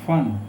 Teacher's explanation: फ के उच्चारण में हमारे होठों से उष्ण वायु अधिक मात्रा में निकलती है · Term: नुक्ता लगा हुआ फ